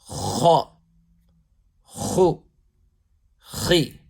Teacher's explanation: pronounced harshly with a full mouth from that part of the throat nearest to the mouth. So it's from that part of the throat which is nearest to the mouth, and raising the back part of the tongue.